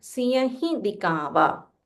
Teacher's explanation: when you say he, make a slight nasal sound